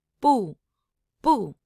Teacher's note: The exclamation mark tone is a high falling tone.